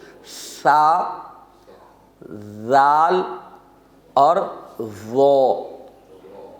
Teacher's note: زبان کی نوک دانتوں کے باہر نکلے تو یہ حرف ادا ہوں گے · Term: حروف لثویہ